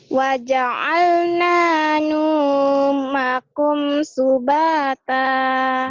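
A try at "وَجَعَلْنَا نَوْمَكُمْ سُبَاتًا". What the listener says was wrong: Bukan nu tapi nau. Wa ja'alna naumakum subata.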